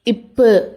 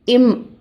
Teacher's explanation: காற்று வெடிச்சு வாய் வழியாக வெளியேறும். இது வெடிப்பொலி. இம் அப்படின்னு சொல்கிறப்ப காற்று வாய் வழியாக வராமல் மூக்கு வழியாக வெளியேறும். இது மூக்கொலி.